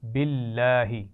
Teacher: لام جلالہ سے پہلے زیر ہے، اس کو باریک پڑھیں گے یا موٹا؟ باریک